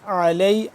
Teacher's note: عین کو حلق کے درمیانی حصے سے اور کھچاؤ پیدا کر کے